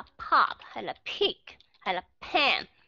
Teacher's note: chúng ta bắt buộc phải có aspiration Ok bật hơi ra ok giữ cái hơi trong miệng nó ra thì chẳng hạn